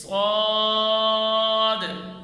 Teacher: اور سب سے اہم غلطی موٹے حرف کی کہ ہونٹ گول کر کر پڑھنا، جیسے صاد، جس کی وجہ سے حرف صحیح ادا نہیں ہوتا، پورے منہ میں آواز بھی نہیں پڑھی جاتی۔ اس لیے ہونٹ بھی گول نہیں کریں گے اور پورے منہ میں آواز بھر کر پڑھیں گے، جیسے صاد، یہ اس کی صحیح ادا ہے۔